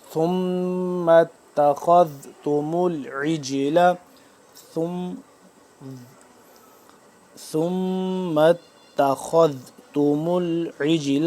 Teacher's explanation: دونوں کو دانت کے درمیان سے زبان کو ذرا باہر کی جانب نکال کے ادا ہوتا ہے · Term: ذال